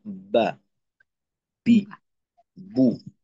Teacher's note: যেমন মনে করেন একেবারে সহজ ভাবে দেখলে, আমরা যদি বা উচ্চারণ করতে চাই, তো আমাদের প্রথমে কি করতে হবে? যে উপরের ঠোঁটকে নিচের ঠোঁটের সঙ্গে লাগাইতে হবে। লাগানোর পর শ্বাসের মাধ্যমে একটা চাপ প্রয়োগ করতে হবে ভিতর থেকে ঠোঁটের উপর। এই চাপের মাধ্যমে উপরের ঠোঁটটা নিচের ঠোঁট থেকে আলাদা হয়ে যাবে, যে কারণে একটা বা, বি, বু এরকম আওয়াজ তৈরি হবে।